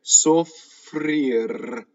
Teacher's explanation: Notice that all the R's are rolled. Final R's rolled if it ends a sentence.